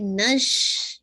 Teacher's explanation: make sure کیجیے شین پہ تفشی ہے